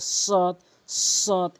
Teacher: জিহ্বার আগা উপরে নিচে দুই দাঁতের আগার সঙ্গে সদ সদ এভাবে উচ্চারণ করবেন, তাহলে আপনার উচ্চারণটি সঠিক হবে।